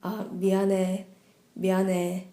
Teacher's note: if you hear Korean dramas, you hear like 미안해, 미안해. It has a slight B sound to it.